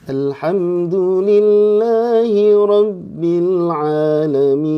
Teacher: Jadi pas Alhamdulillahirabbil alamin itu naik dengan datar. Kemudian harus ditutup dengan turun.